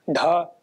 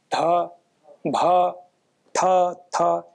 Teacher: इनका उच्चारण करें तो स्वतः आपको पता लग रहा है कि अतिरिक्त प्राण की आवश्यकता हो रही है। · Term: महाप्राण